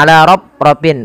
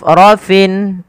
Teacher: huruf fa tidak boleh bibir kita merapat sehingga nanti terdengar dengan bunyi huruf P. Misalnya ala rafin, bukan, karena dia fa ada salah satu sifat yang harus dibunyikan, yaitu sifat hamsnya.